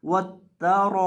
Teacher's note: रॉ को हम यहाँ लंबा करेंगे, रॉ को एक अलिफ की मिकदार खींच के पढ़ेंगे। वत ता रॉ, हमदा ज़ेर ई वत ता रॉ ई।